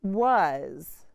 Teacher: the a makes the schwa sound uh and the s makes the z sound